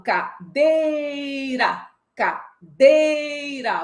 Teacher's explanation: Quando eu falo cadeira, cadeira, você percebeu que o dei eu prolonguei? Então, esta é a sílaba tônica. É a sílaba mais forte desta palavra.